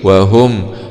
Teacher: ميم سكون مع الإظهار الشفوي